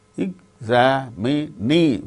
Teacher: In the case of the word examinee, examinee, fourth syllable gains stress.